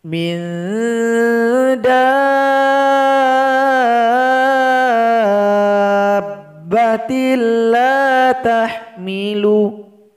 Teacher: mesti dipanjangkan selama 6 harakat atau m ketukan baru ditasydidkan kepada huruf ba Mi reda batil